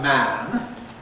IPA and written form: mæn (man)